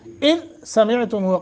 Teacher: اذ دال کو ساکن کرنا ہے، اذ سمعتموہ قلقلہ نہ ہونے پائے